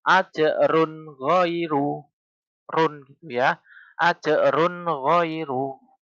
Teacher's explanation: Ada dhammah tanwin bertemu dengan ghain. Maka dhammah tanwin tersebut dibaca dengan jelas. N-nya dibaca dengan jelas. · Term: idhar